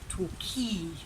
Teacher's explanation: You've got or and e, tor, key, and the stress is on the second syllable, so it's Torquay.